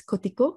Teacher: An example of a trisyllabic word with final stress